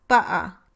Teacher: replacing the T sound in butter with a glottal stop is acceptable in some dialects of British English, but not in American English